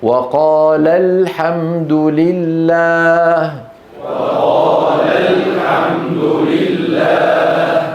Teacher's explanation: هي في الآية وقالا، كلاهما قال هذا الكلام وقالا، لكن ألف التثنية سقطت للتخلص من التقاء الساكنين. فهنا نضغط لنبين بأن المتكلم عنهما شخصان، ولا نقول وقال الحمد لله، صار كأنه مفرد. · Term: النبر